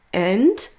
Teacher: Une forme forte, donc quand on le prononce seul, sans phrase, and, là on entend bien le son D